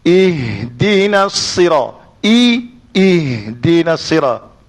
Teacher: Ha, I dulu, jangan hilang I tu. I tu kena bunyi I, lepas tu tarik ha masuk.